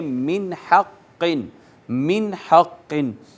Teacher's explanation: آواز نون پہ نہیں چھپائیں گے، اس کو صرف ظاہر کر کے آگے چلے جائیں گے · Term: اظہار